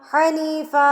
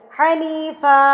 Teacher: جب آپ 2 زبر پہ وقف کریں گے تو 1 الف پڑھیں گے. حنیفا لمبا کر کے پڑھیں گے. جب 2 زبر پہ وقف کرنا ہے تو 1 الف پڑھا جائے گا، 2 زبر نہیں پڑھی جائے گی، 1 الف پڑھا جائے گا.